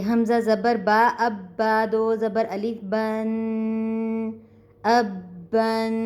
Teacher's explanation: تو تنوین کی ادائیگی کا طریقہ کار یہ ہوتا ہے کہ ہم تنوین پر غنہ کرتے ہیں اور ناک میں آواز کو لے کے جائیں گے اور 2 سیکنڈ اس کو کھینچ کے پڑھیں گے